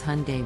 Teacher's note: the correct pronunciation is Hyundai with the emphasis on the first syllable